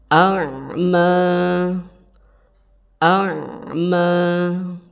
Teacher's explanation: huruf Ain tempat keluar hurufnya atau makhorijul hurufnya Ain yaitu ada di bagian tenggorokan bagian tengah